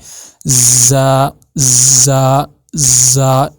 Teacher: پہلے اس میں لگے گی ایک سیٹی چھوٹی سی، ایسے کر کے. جب آپ دونوں دانتوں کو جوڑو گے، آپس میں مکس کرو گے، پھر تھوڑی سی آپ سیٹی جیسے لگائیں گے، زا زا زا، ایسے آپ کا زا ادا ہوگا.